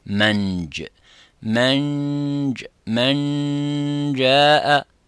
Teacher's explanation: As you can see, the tongue is going into the roof of the mouth, the middle part of the tongue is going to the roof of the mouth